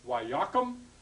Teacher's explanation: Here we add the vowel, the pathak, the dagesh forte, and the same thing happens. The accent moves onto the prefix syllable.